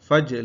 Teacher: ada jim yang disukun, qalqalah sughra, maka dipantulkan cara membacanya